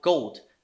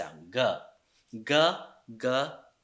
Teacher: the beginning constant of gold is voiced and also velar